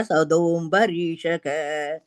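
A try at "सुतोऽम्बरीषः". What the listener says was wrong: சதோம்பு இல்ல, சுதோம். சுதோம்.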